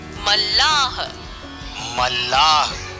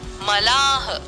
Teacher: मल्लाह बोलने में ल का उच्चारण 2 बार होता है, एक बार कम और एक बार ज्यादा। इसी कारण मल्लाह शब्द में आधा ल और पूरा ल का प्रयोग किया जाता है।